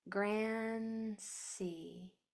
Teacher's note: my tongue is at the top of my mouth and it's staying there and then it's going straight to the S. Grand Cy. I'm not forming a D sound.